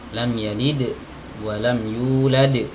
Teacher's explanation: Ya, cuma bedanya itu di sifat. Kalau dal itu ya, ketika sukun dia qalqalah